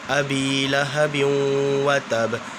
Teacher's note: ابی میں نے 1 الف کے برابر کھینچا